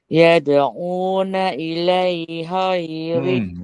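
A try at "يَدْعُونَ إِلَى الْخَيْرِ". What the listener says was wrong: Kan? Bukan ilai. Ilal khairi.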